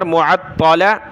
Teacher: تا کو موٹا کریں گے، سخت کریں گے، عین کو تا کے ساتھ ملا کر